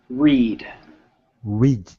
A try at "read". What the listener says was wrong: No, don't go too fast.